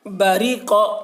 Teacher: قاف کی آواز موٹی ہو رہی ہے، اور را کی آواز باریک ہو رہی ہے